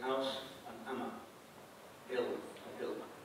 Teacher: They don't pronounce the H, all right? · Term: initial H